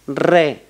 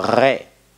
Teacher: re con la lengua delante o re con la lengua para atrás como en francés o como en alemán